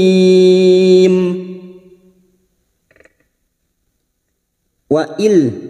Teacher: nun sukun bertemu lam idgham bila gunnah hanya masuk tanpa mendengung, masuk pada huruf lam tanpa mendengung, tanpa ditahan lama-lama.